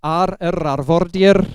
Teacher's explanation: It's got a trilled r, so arvordir means on the coast. So it's a very trilled r sound.